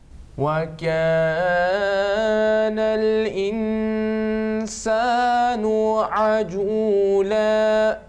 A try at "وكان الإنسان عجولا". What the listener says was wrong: More practice, more practice is needed for you to ikhfa. Ikhfa basically half gunna, light nasal sound. Kana al-insanu ajula.